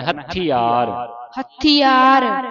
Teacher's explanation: ਥਥੇ ਨੂੰ ਉਤੇ ਅੱਧਕ ਲਾ ਕੇ ਉਚਾਰਨ ਹੋਵੇਗਾ ਥਥੇ ਨੂੰ ਥੋੜਾ ਭਾਰਾ ਉਚਾਰਨ ਕਰਨਾ